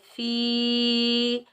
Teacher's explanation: فا کے نیچے زیر، آگے یا ساکن ہے، یہاں ہم فا کے نیچے زیر، آگے یا ساکن ہے، یہ یا مدہ، اس کو ہم ایک الف کی مقدار کھینچ کر ادا کریں گے